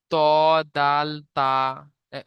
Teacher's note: 11 নম্বর মাখরাজ, জিভের আগা এবং সামনের উপরে দুই দাঁতের গোড়ার সাথে লাগিয়ে উচ্চারিত হয়,